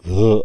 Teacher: ग मध्ये ह मिसळल्यावर घ ऐकू येतं बघा म्हणून हा महाप्राण मिश्रित व्यंजन वर्ण आहे